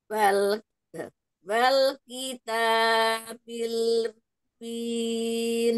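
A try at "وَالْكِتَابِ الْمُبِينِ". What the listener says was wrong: Ya, taknya masih kepanjangan, cukup 2 harokat. Wal kitabil mubin.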